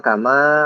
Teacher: ma panjang itu, kemudian bertemu alif lagi, jadi lebih panjang. Kama, nah pokoknya ini adalah majaz munfasil.